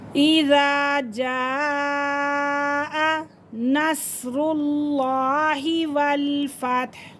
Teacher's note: اذا جاء نس، صاد کو پور کریں گے، نس، اور لفظ اللہ کی لام سے پہلے پیش آ رہا ہے تو اسے بھی ہم پور کر کے پڑھیں گے